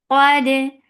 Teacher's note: dal will get sifa of qalqala. This qalqala should be very crisp and nice.